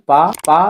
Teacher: दोनों ओंठ टच कर रहे हैं तो ये ओष्ठ ध्वनि हो गई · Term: ओट ध्वनि